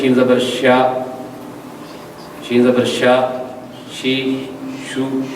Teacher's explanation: تفشی ایک ایسی صفت ہے، یہ حرف شین میں پائی جاتی ہے، شین کے اندر، اور جس حرف میں یہ پائی جاتی ہے اس کی آواز کو منہ میں پھیلا دیتی ہے، یعنی شین کے ادائیگی میں آواز منہ میں پھیلتی ہے